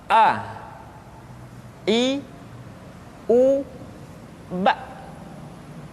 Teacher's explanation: Makhraj ketika mengucapkan huruf A berada pada tenggorokan yang terjauh.